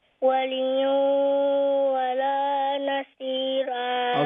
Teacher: when you make the idgham, waliyan, make sure the ghunna comes from the nose and not the mouth